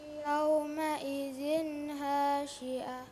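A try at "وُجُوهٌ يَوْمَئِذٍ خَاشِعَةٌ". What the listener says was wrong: bukan ha itu kha. Wujuhu yawma idzin khashi'ah.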